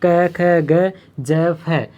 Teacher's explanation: इन वर्णों का उच्चारण जब करते हैं तो संघर्ष करना पड़ता है, यानी कि मुंह से जो होती है गर्म हवा निकलती है, गर्म हवा का ऊष्मा निकलना, मतलब गर्म हवा निकलना मतलब ऊष्मा निकलना, ऊष्मा के कारण इसे ऊष्म वर्ण कहा है। इन वर्णों को बोलते समय गर्म हवा निकलती है, यानी घर्षण होता है।